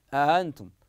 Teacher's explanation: يحترز في تسهيل الهمزه الثانيه من قلبها هاء